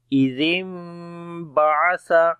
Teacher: نون نہیں پڑھیں گے، اور نون میم کی آواز چھپا کر پڑھیں گے